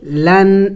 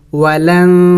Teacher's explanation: نون ساکن ہے اخفا کرنا ہوگا، یعنی ناک میں آواز چھپانا ہوگا، نون کو ظاہر کر کے نہیں پڑھیں گے، لن نہیں پڑھیں گے، ولن۔